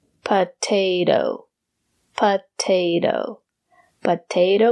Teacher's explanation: the second T is pronounced as the fast D